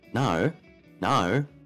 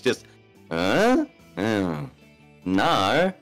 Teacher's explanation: There's no R. I'm not like curling my tongue to make the I sound whatsoever.